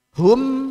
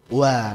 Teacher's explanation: Mim itu kan dua bibirnya nempel. Baik. Sedangkan waw dia dua bibir tapi nggak nempel.